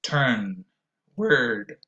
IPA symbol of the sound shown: ɝ